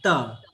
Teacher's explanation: जो दांत जिह्वा जब दांत से टच करती है तब हम त बोलते हैं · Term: दंत्य वर्ण